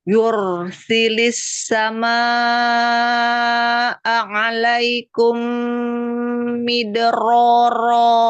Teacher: Ro fathahnya gitu ditebalkan ya, angkat pangkal lidahnya ya. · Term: ro yang tafkhim